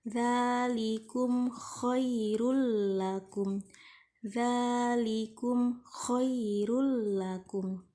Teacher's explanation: Mim mati bertemu dengan huruf kha, harus dibaca dengan jelas atau izhar syafawi.